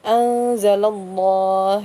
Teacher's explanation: Jadi sebelum lafaz Allah jika ada harokat fathah atau dhammah itu dibacanya tebal. Namanya tafkhim.